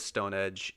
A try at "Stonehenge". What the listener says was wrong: Are you saying Stonehenge? It's Stonehenge. You don't pronounce that H hard enough.